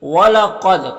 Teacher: قاف حروف مستعلیہ میں سے ہے اور دال میں قلقلہ ہوگا